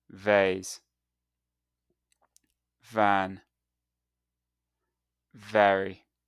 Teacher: So, to make this sound, place your top teeth lightly on your lower lip. And now make a buzzing sound with your vocal cords as you push air out like this. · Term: VV sound